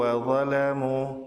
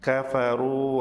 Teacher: Perbedaan makhraj wawu dan mat wawu. Makhraj wawu berada di dua bibir, yaitu bertemunya bibir atas dan bibir bawah. Sedangkan makhraj mat wawu berada di rongga tenggorokan dan mulut.